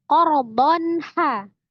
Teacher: Alif itu sudah menjadi rumus sepaket dengan fathah tanwin ya. Jadi tanwin ketemu dengan ha salah satu huruf halki. Maka hukumnya adalah izhar halqi. Dibaca dengan jelas.